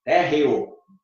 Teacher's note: O ditongo é crescente, porque o E tem som de I, térreo. O E é semivogal e o O é vogal. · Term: ditongo crescente